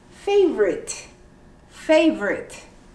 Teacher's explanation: you omit the o and you say favorite favorite